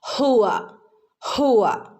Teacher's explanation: നമ്മുടെ നെഞ്ചോട് ചേർന്ന ഭാഗത്തുനിന്നാണ് ഹ എന്നുള്ള ലെറ്റർ വരുന്നത് ഓക്കേ അപ്പോ തൊണ്ടയുടെ ഏറ്റവും അടിഭാഗം ല്ലേ നെഞ്ചോട് ചേർന്ന ഭാഗം ഹുവ ഹുവ